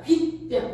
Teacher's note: 앞말의 끝이 모음이고 뒷말의 시작이 예사소리인데 그것이 지금 쌍비읍이라고 하는 된소리로 바꿔서 말했잖아